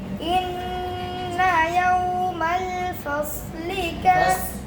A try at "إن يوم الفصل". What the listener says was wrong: ফাস এই খেয়াল করেন ফাস সিনের মাখরাজ সিন যে জায়গা থেকে ওই জায়গাতে হয়েছে ফাস সিন হয়ে যাচ্ছে সিনের মিশ্র চলে আর ফাস ফাস ফাস إن يوم الفصل كان ميقاتا إن يوم الفصل সিন যে জায়গা লাগবে সব সেই জায়গা লাগবে না জিহ্বাটা অনেকটা পিছাবে কেন ইস্তিআলা